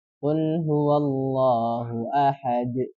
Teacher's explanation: dengan menambahkan sifatnya huruf dal, yaitu memantul.